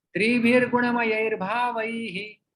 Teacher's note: हाँ, तो यहाँ पर जो विसर्ग है उसका रेप में परिवर्तित हो जाए, त्रिभिर गुणमय बनता है और गुणमयैर भावै र का उच्चारण आ जाता है विसर्ग की जगह पे